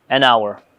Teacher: Demak, boshdagi hourdagi h harfi bilan boshlanyapti, lekin bu h demak odatda uncha talaffuz qilinmaydi. Ya'ni tushib qolish ehtimoli bor yoki bo'lmasam buni talaffuzi demak an hour ga to'g'ri keladi.